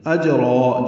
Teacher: جیم ساکن پہ قلقلہ اور را مد عوض بنے گی، 2 حرکات لمبا کریں گے، ملانا ہوگا تو اجراؤں ادغام ناقص کرنا پڑے گا۔